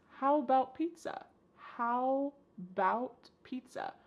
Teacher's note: The first a in the word about is gone. It's just missing. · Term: reduced